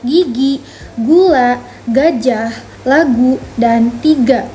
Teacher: G disebut juga konsonan letuk belakang bersuara karena diucapkannya dengan menutup bagian belakang lidah ke langit-langit, lalu dilepaskan · Huruf G termasuk konsonan bersuara. Artinya, saat kita mengucapkannya, pita suara kita ikut bergetar.